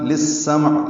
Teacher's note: للسمع لام کو سین سے ملانا ہے، ادغام شمسی، عین وسط حلق سے ادا ہوگا۔